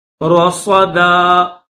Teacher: را کو بھی موٹا کریں گے, صاد کو بھی موٹا کریں گے